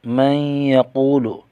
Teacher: نون ساکن کا ادغام یرملون مع الغنہ غنہ کیا جائے گا۔ واو ساکن کا واو مدہ ہے، ایک الف کھینچ کر پڑھیں گے، قاف کو موٹا کریں گے۔